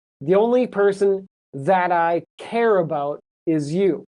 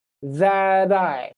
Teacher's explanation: So that I blends together. So you might say that I, but you don't need to separate it, put it together, say it like it's one word. And the T turns into a D sound.